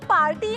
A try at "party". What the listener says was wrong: it's party, not party. R is silent.